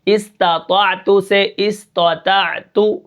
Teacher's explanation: پہلے طا کو موٹا کرنا ہے، دوسرے تا کو عین کے ساتھ ملا کر پڑھنا ہے، اور آخری تا کو جو ہے اس کے اوپر قلقلہ نہیں کرنا